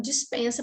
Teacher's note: a gente acaba usando muito o E com som de I, e a gente acaba falando dispensa para tudo.